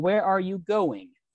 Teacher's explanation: the voice will go down as you speak it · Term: falling tone